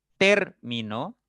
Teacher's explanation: en termino la sílaba fuerte o el acento recae en ter